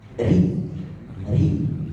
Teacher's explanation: ketika harakat di bawah maka takrirnya lebih jelas lebih nampak Ri Ri ketika dia harakat fathah